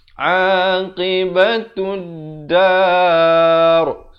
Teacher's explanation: Alif lam syamsiah di sini lamnya tidak dibunyikan.